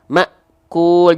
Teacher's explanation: yang namanya adalah syiddah syiddah artinya adalah tertahan suara kita ah karena Hamzah punya sifat syiddah ketika Hamzah dalam kondisi sukun akan sangat terasa sifat syiddahnya tertahan suaranya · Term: Hamzah sukun